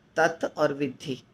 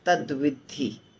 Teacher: तत और विधि तत और विधि मिलके होता है तद विधि तत में त है पर व त और व मिल गया तो द बन गया